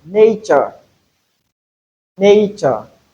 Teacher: So in place of t we have ch sound